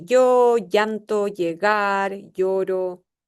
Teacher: El yeísmo ya está presente, no hay diferencias entre yo, llanto, llegar, lloro